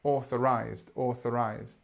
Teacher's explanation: it's like a word where there are two stresses almost